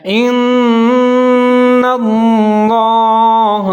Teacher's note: لفظ اللہ اس کے اوپر لام جو ہے مشدد ہے، اس سے پہلے بھی نون مشدد ہے، دونوں کو ساتھ میں ملا کے پڑھیں گے، جیسے ان اللہ۔ لفظ اللہ کو موٹا پڑھنا ہے کیونکہ اس سے پہلے جو نون مشدد ہے اس کے اوپر زبر ہے